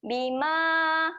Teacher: Ma panjang. Okey, 4 harakat.